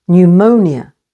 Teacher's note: stress on the second syllable pneumonia